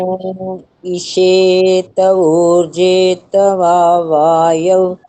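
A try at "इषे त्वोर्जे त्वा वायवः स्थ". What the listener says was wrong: नहीं नहीं नहीं, दोबारा से ध्यान दो। आधा आधा त है, आधा आधा त है ना।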